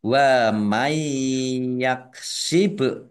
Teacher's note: nun sukun bertemu dengan huruf ya bacaan idgham bi gunnah masuk dengan mendengung yaitu mendengung ya ditandai ya-nya ada tasdidnya ditahan 2 harokat biar tampak dengungannya.